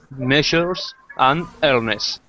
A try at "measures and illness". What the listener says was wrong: Measures and illness. Perfect.